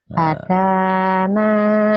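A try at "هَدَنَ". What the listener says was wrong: hadana. Ada gendangannya. Hadana. Jangan ada gendangannya. Hadana.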